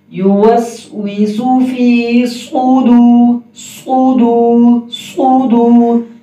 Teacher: اس میں صاد کی سیٹی موٹی ہوگی